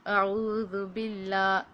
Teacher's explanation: باللہ یہ پتلا ہے کیونکہ اللہ سے پہلے زیر ہے